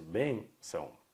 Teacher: Então eu vou acentuar, assim como eu acentuo, por exemplo, a palavra órgão. A única diferença aqui é que o timbre é fechado, por isso que o acento é circunflexo.